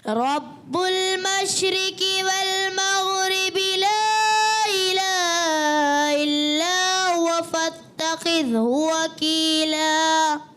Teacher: رب المشرقی قاف موٹا نہیں گیا، والمغربی غین میں تھوڑا سا کلکلا محسوس ہوا، اور لا الہ یہاں تھوڑا سا آپ نے کھینچ دیا حرکت کو، تو غلطیاں ہو رہی ہیں.